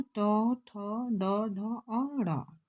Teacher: इनकी जो ध्वनियों का जो उच्चारण होता है यह मुर्धा के द्वारा होता है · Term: मुर्धन्य